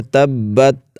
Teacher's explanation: اب دیکھیے یہاں پر با پر شد ہے تو اس کو خوب جماؤ کے ساتھ ادا کریں گے، کیونکہ جو بھی حرف مشدد ہوتا ہے اس کو خوب جماؤ کے ساتھ ادا کرتے ہیں۔ تبت، تا پر قلقلہ نہیں کرنا، بہت سارے احباب تبت ایسے کر لیتے ہیں، تو تا حرف قلقلہ نہیں ہے، تبت آواز ہلے نہیں۔